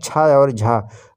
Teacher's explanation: महाप्राण जिनमें हवा अधिक निकलती है